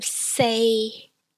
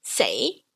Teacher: So say in the third tone, which is flat, is 4. Say in second tone, rising, is death.